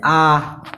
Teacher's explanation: मुंह होता है जो पूरा खुल जाता है, उसको बोलते हैं विवृत